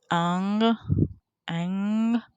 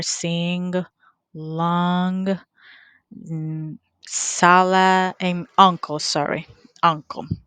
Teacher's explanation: The place or point of articulation it is velar. Manner of articulation it is nasal